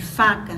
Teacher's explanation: quando o ar passa pela glote que é o primeiro obstáculo a as pregas vocais estão abertas então ele não provoca vibração por isso ele é caracterizado como um som desr e ele